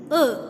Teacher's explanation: we will write unrounded central between half close and half open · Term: schwa